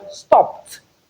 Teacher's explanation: When you have the ed after a voiceless consonant sound, then you realize it as the voiceless alveolar plosive. · We have p before t, and p is voiceless. Hence, we realize the ed as t, which is equally voiceless.